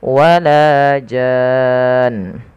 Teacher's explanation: pada dasarnya dia adalah mad lazim kalimi musaqqal, yang dimana dia wajib dipanjangkan 6 harokat, dan di sini mad aridnya hanya boleh memilih satu, yaitu dipanjangkan sepanjang 6 harokat karena asalnya dia mad Mad lazim ya, mad lazim yang dipanjangkan 6 harokat.